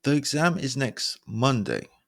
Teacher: again the pitch or the stress falls on Monday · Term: downward inflection